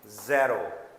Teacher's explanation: Don't give the sound of j, it's a z like measure and pleasure.